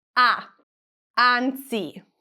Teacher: The vowel a is the most open vowel in Italian. That means that you're going to open your mouth more.